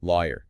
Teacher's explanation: Stress on the first syllable and that definite year sound at the end.